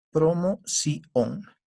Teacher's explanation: La mayor fuerza de voz está en la sílaba sion, promoción. Y el acento ortográfico se utiliza para indicar al que está leyendo que la última sílaba, sion, se debe pronunciar con más fuerza.